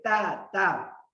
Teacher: ایک ہے تا جس پہ دو نقطے ہیں اس کو باریک پڑھیں گے